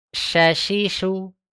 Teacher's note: Syin tidak menyentuh tapi keluar udara.